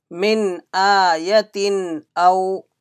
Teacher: Min ayatin aw. Hamza came after Tanween, there will be Izhar. There is no gunna.